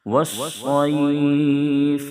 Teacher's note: صاد کو ہمیشہ موٹا کر کے ادا کرتے ہیں تاکہ سین سے نہ بدلے۔ یہاں پر بھی وقفاً مد لین عارض وقفی ہوگا، رکیں گے تو 2.5 3 الف یا 5 الف تک بھی کھینچنے کی گنجائش ہے۔